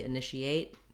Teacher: So in initiate, this T is an SH sound. We have a true T here at the end or a stop T, initiate.